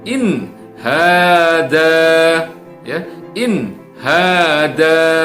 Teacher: Nah, ini contoh dari ketika nun mati atau nun sukun bertemu dengan huruf H, ya. Jadi harus dibaca dengan izhar atau jelas, tidak boleh didengungkan, ya, tidak boleh ditahan, tidak boleh mendengung juga